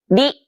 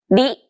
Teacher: lightly tap the gum ridge behind your upper teeth with the tip of your tongue.